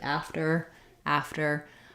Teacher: you can think about it like a t without the air releasing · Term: flap